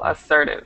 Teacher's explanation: The stress is on the second syllable, assertive.